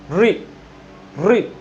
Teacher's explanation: री बोलोगे दांतों में टकराई, तो उसको री को जीभ मूर्धा पे रख के बोलो